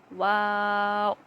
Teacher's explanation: دونوں ہونٹوں کو گول کرنے سے اور نہ ملانے سے واو ادا ہوتا ہے